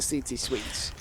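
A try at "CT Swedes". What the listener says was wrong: Not CT Sweet. CT Sweet. That sounds a little like sweets. You know, some sweets, some CT sweets.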